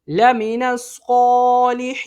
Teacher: یہ عارضی سکون ہو جائے گا حروف مدہ کے بعد۔ عارضی سکون مد عارض کو 3 انگلیوں کی مقدار کے برابر کھینچ کے پڑھا جاتا ہے۔